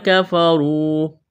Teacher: یا ایہا الذین آمنوا ان تطیعوا الذین کفروا، را کو موٹا کرنا ہے، را کے اوپر پیش ہے، واو مدہ ہے، الف کے برابر کھینچنا ہے